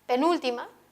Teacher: puede aparecer en la anterior a la penúltima es decir en la ante penúltima sílaba como en la palabra penúltima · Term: acento